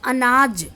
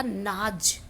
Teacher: उदाहरण है, शब्द है अनाज। अब अनाज का अ लोप हो गया तो पीछे शेष रह गया नाज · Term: आदि स्वर लोप